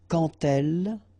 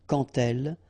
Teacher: So like that, quand elle, all right, same rule here. Remember, when you will have this de, you will phonetically pronounce it like te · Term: liaison